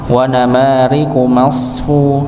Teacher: masfu dengan huruf sadnya, maka ditebalkan huruf sad